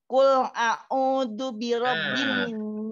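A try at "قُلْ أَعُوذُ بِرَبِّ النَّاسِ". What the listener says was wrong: bukan a'u. Qul a'u. Hamzah dengan ain mesti beza. Hamzah dengan ain mesti berlaku perbezaan kerana dari sudut makhraj dia keluar daripada makhraj yang berbeza. Hamzah berada di pangkal halqum. Ain berada di tengah halqum. Qul a'u.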